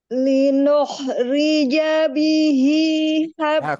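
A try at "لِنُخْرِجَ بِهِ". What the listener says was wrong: Kurang Bu, kurang penekanan. Linukhrija bihi.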